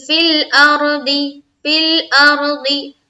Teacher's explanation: اس کے آگے چلیں گے فل ارضی، فل ارضی، فالام زیر فل، حمزہ اور را زبر ار، را کو پر رکھیں گے کیونکہ را ساکنہ سے پہلے کیا ہے زبر ہے